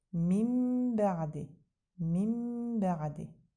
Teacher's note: Baxın nun hərfi bə hərfinə yetişir və təkdili mimlə əvəz olur. Ambarə də əməl edirik tələffüzdə. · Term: iqləb